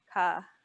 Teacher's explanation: Your tongue will be touching the back of your mouth, towards the back of your mouth.